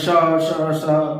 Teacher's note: ऊष्म व्यंजन जो है इनको बोलते समय जो है संघर्ष करना पड़ता है, श श श, तो इनको जो है संघर्षी व्यंजन कहा जाता है।